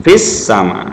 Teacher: Ini alif lam syamsiyah. Alnya al ta'rifnya tidak kelihatan lagi dalam bacaan. Fis sama, nggak bunyi lagi lamnya kan? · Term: idgham syamsiyah